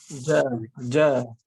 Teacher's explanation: jim itu sifat tertahan, ja.